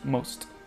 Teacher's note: Et alors, ici, cette diphtongue-là, je l'ai surlignée dans une couleur différente, parce qu'en anglais, le britannique, c'est pas une diphtongue. On peut le prononcer comme une seule et même voyelle most, en anglais britannique. Mais en anglais américain, qui est le plus utilisé, c'est une diphtongue dans le sens où ça se prononce most.